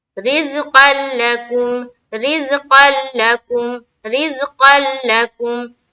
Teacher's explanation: بغیر غنہ کے کریں گے اور پورے طور پر بدل جاتا ہے اس میں، اسی لیے اس کا نام ادغام بلا غنہ اور ادغام تام ہے.